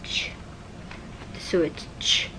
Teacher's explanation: So you start from at the alveolar ridge and move on to palatal. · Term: Affricates